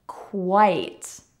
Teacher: notice that we have a W sound even though there is no W in the spelling